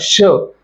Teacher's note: श म्हणजेच तालव्य आपली जीभ आहे हे टाळूला स्पर्श करत आहे